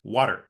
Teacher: that t even though T is usually voiceless becomes voiced and it also becomes something like a tap where the tip of your tongue just Taps the alve ridge